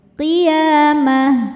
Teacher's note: ta marbutah apabila kita berhenti dibacanya jadi ha sukun